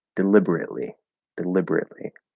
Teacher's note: you can just do a glottal stop t without actually being in the t position all the other stop sounds you have to be in the